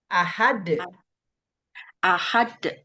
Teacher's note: D-nya dibaca karena itu qalqalah kubro.